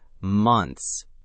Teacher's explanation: That's actually 4 consonant sounds stacked together at the end. NTHS, or asked. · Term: consonant clusters